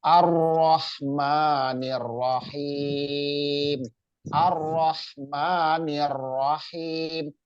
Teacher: Jadi tasdid itu menandakan bahwa huruf tersebut ro ya, huruf ro tersebut itu double, jadi dibacanya ditekan. Jadi jangan, harus jelas, harus terdengar tasdidnya, harus ketahuan, yang dengar itu harus tahu kalau itu ada tasdid di ro ya.